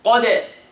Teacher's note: the قاف is heavy and the دال is قلقلة